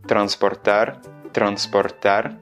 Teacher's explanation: tu vas voir que le roulement est très léger, il y a à peine un claquement de la langue dans ces cas-là.